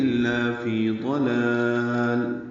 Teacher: قلقلہ نہ ہو، لام ہلے نہیں، لام کے اوپر سکون ہونا چاہیے